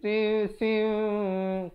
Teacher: Ikhfa syafawi bacanya kadar dua harakat. Mim yang bibir itu hampir bersentuhan saja dua harakat.